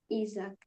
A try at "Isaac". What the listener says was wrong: And in English, it's Isaac. So a little more of an emphasis on the first A. So Isaac.